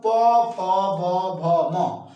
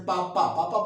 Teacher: आप जब प बोलते हैं तो दोनों ओंठ आपस में सटने लगते हैं, आपस में स्पर्श करने लगते हैं। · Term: ओष्ठ